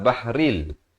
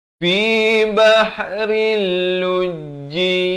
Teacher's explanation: Di sini idgham bila gunnah. Asalnya bahrin, datang lam bahril.